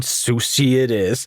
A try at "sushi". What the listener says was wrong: That's because they pronounce it sushi. You gotta shh. It's an SH. It's not a C. There's no C.